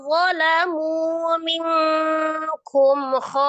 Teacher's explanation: Cara membacanya itu kho-nya dipanjangkan dulu 6, kemudian ditasdidkan ke huruf shad. Tasdid ke huruf shadnya dengan cara dinaber. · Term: mad lazim musaqqal